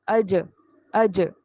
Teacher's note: جیم کو سختی سے پڑھی، اچ کر کے آواز چ کی ساؤنڈ نہیں